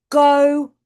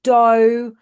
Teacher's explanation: sounds that are produced down here at the back, k and g, are produced as t and d. So instead of go, we'd have dough. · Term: Fronting